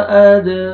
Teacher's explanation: दाल कलकला double sound आएगा, रा को मरखड़ा ज़बर है, रा को मोटा करके पढ़ेंगे, एक अलिफ के बराबर आपने खींचना है।